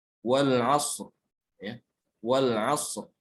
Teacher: Ronya sukun, sebelumnya huruf shad yang sukun, sebelumnya huruf ain. Maka ini dibaca tebal ronya